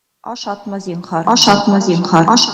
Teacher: Ну и если это была отрицательная форма, то, так называемый прохибитив, то ударение ставилось на слог, предшествующий отрицательной частице, ну и общая интонация была нисходящей